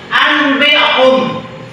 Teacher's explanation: Contoh iqlab artinya mengganti nun mati atau tanwin yang bertemu dengan ba menjadi mim disertai dengan dengung